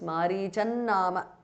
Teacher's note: The anuswara changes to na.